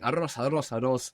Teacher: you need a very relaxed mouth to pronounce this R because you're kind of lifting your tongue up a little bit and letting the air flap it now that's a muscle if it's tense the air can't flap